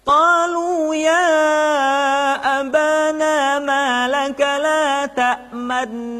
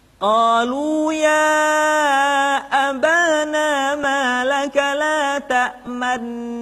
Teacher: Pada kalimat la ta'manna. Ishmam adalah menampakkan dhammah yang terbuang dengan isyarat bibir.